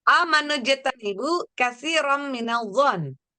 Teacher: Di sini ada fathah tanwin ketemu mim. Bacanya itu masuk dengan dengung dan ditahan 2 rakaat. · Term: Idgham biguna